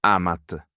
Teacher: the long A of the stem shrinks to a short A before a final t and a final n t, which is why he loves and they love carry a short vowel.